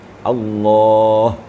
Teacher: Lafaz jalalah itu akhirnya adalah huruf ha. Dia harus maksimal getarannya.